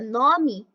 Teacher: Já na palavra nome e cresce, o E passa a ter som de I